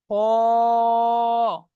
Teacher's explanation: অক্ষরটি উচ্চারণ করবার সময় মুখটি গোল আকৃতি হবে। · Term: মুখ গোল করে